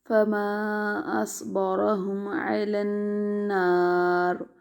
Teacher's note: وقف میں را کو پر پڑھیں گے، اگرچہ اس کے نیچے زیر ہے لیکن اس کو اس سے پہلے جو ہے نون کے اوپر زبر ہے، تو اس کی وجہ سے یہ والا را بھی وقف میں پر پڑھا جائے گا۔